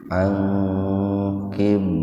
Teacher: Huruf ba mati di tengah-tengah kata. Membacanya dipantulkan secara ringan. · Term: qalqalah sugro